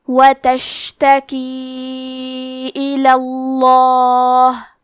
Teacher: کلمت الا میں کیونکہ لام پہ زبر ہے تو لفظ الجلالہ کے لام کا حکم ہے تفخیم، تو ہمیں حرف اللام کو موٹی آواز میں پڑھنا ہے.